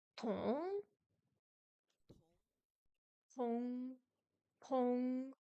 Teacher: Le T est ce qu'on appelle une consonne aspirée. Il faut la prononcer en expirant de l'air avec une petite explosion, un peu comme en anglais.